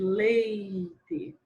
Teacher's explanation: por exemplo, leite, a gente quase não ouve o i. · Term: semivogal